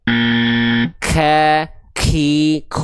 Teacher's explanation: Hams itu artinya adalah mengalir nafas. Tapi untuk huruf kaf ini pengkhususan dia hanya berupa tepercik nafas atau percikan nafas saja